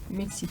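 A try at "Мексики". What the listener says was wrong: The stress is on the first one, but at the end there is like also E. You pronounce it, but like very, very light.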